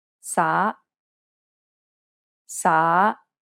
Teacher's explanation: It has a rising intonation and kind of sounds like you're asking a question. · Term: second tone